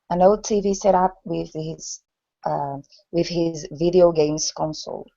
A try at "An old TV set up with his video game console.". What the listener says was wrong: Okay, now let's go back to old instead of ode. Old.